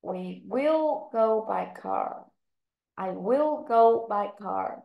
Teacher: Thì go and car là chúng ta đánh trọng âm, còn I will và by là các con không đánh trọng âm vào các phần.